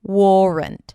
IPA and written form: ˈwɔːrənt (warrant)